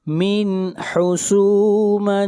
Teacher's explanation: یہاں پر تنوین کو ظاہر کر کے پڑھیں گے، اس لیے کہ تنوین کے بعد اگلا حرف حا ہے، اور حا حروف حلقی میں سے ہے، اور قاعدہ یہ ہے کہ جہاں پر نون ساکن اور تنوین کے بعد حروف حلقی میں سے کوئی حرف آ جائے تو وہاں پر اظہار کرتے ہیں۔